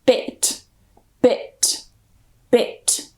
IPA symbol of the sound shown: ɪ